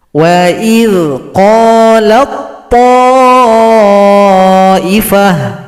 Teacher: huruf ta tidak dibaca lagi karena telah gabung kepada huruf to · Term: idgham mutajanisain